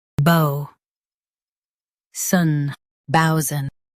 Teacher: Say bow strong and sun soft.